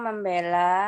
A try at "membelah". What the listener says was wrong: Membela atau membelah? Membelah. Kurang H.